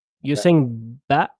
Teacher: you're saying ba, and then your vocal cords basically closing immediately.